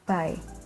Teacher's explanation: The B sound is called voiced bilabial stop